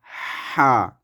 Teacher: হলকের মধ্যখানে হতে উচ্চারিত হবে হা।